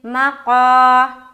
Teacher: الف مدہ کو ایک الف کے برابر کھینچ کر پڑھیں گے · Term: یا مدہ